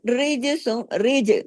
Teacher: جیم پہ کلکلا ہوگا، را باریک، را کے نیچے زیر ہے ، ریج، جیم پہ کلکلا، کیوں، کتب جد کا لیٹر ہے،